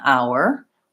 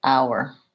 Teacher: in this case we don't say the H sound in our